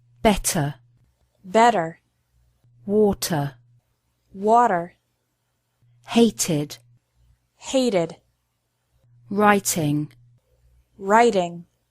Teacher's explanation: Americans often pronounce the letter T like a quick D sound.